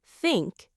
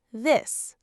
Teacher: Think has a soft TH. This has a voiced TH.